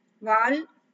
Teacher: this il I am pronouncing from the tip of the tongue